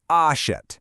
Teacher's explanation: your mouth actually opens wider, and the sound relaxes into more of an eh sound, sort of like in the English word pet or set. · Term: open e sound